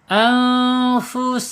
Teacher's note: Kalau tertutup rapat sifat hamasnya nanti hilang ya, gitu. Anfusakum sin secara makhraj ada di al-lisan, ujung lidah menyentuh gigi seri bawah